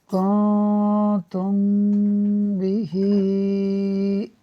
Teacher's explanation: میم ساکن کے بعد حرف با ہے، لہٰذا یہاں اخفاء شفوی ہوگا، یعنی میم ساکن میں ہم غنہ کر کے پڑھیں گے۔ تو ایک قاعدہ یہاں پر اخفاء شفوی کا ہو گیا، جس کی وجہ سے غنہ ہو رہا ہے میم ساکن میں۔